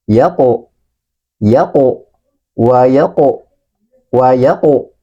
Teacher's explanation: Di hadapannya ada huruf qaf dalam keadaan mati atau sukun. Maka huruf qaf ini tadi ketika mati atau sukun, maka harus kita pantulkan bunyinya.